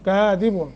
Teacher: ہم الکاذبون، کاذبون کاف کے اوپر کھڑی زبر ہے، ایک الف کے برابر مد ہے، ذال کا مخرج صحیح ادا کرنا ہے، بون مد عارض ہے، طول توسط قصر کر سکتے ہیں